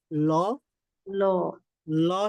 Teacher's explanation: ল ল ল সাউন্ডটা ল যদি বলি তাহলে কোথায় লাগে আমাদের জিহ্বার অগ্রভাগ এটা সামনের যে দাঁতগুলো আছে দাঁতগুলো গোড়ার সাথে লাগে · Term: লাম